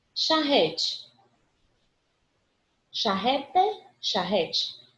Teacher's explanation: Porque a pronúncia da gente é com esse ezinho mais fechadinho, com sonzinho de i